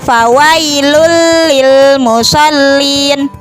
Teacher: idgham bilagunnah dimasukkan tidak disertai dengan dengung · dhommatain bertemu dengan salah satu huruf idgam bilagunnah yaitu lam maka tanwin tersebut dimasukkan ke dalam huruf lam